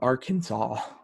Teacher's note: the final S was to be silent, and the accent was to be on the first and last syllable